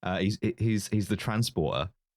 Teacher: Statham pronounces his T's, like he really enunciates them, whereas Ed Skrein is like glottal stop city.